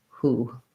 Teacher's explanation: For the word who, instead of going to woo, it went to who. So we just have the H sound in who.